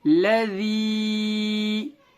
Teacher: یا ساکن سے پہلے ذال کے نیچے زیر آ گیا, یا مدہ ہوگا. یا مدہ کو تھوڑا کھینچیں اور معروف پڑھیں